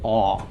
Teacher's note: in Ashkenazic the Komets can be pronounced as a short O or almost it's almost an aw sound